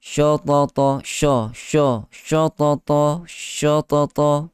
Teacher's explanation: menebalkan huruf shin kerana ia bersebelahan dengan huruf-huruf tafkhim